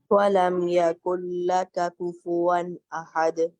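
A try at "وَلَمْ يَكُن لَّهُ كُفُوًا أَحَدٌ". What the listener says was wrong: अहद, हा को वाज़े कीजिएगा।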